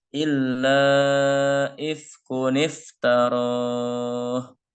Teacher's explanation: Jadi dhammah tain pada huruf kaf, dhammah tainnya hilang dan tersisa dhammah saja. Dan ditambah dengan nun kasroh yang asalnya bunyi kun sekarang menjadi kuni.